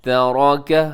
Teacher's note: را موٹا رکھیے گا، را کے اوپر زبر ہے